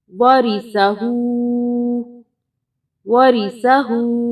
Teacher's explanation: سا زبر سا، واریسا۔ ہا الٹا پیش ہو ہوتا ہے، لیکن چھوٹی مد کی وجہ سے اس کو 2 الف کے برابر کھینچیں گے